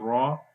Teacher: را کے اوپر زبر ہے اس کو موٹا پڑھیں گے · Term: را موٹا